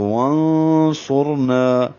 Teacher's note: نا کو 2 حرکات لمبا کریں گے تو وانصرنا.